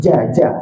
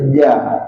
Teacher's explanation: Makhraj huruf jim kita guna tengah lidah. Tengah lidah inilah yang kena langit-langit atas.